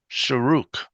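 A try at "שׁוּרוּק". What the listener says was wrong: Shuruk, that's right,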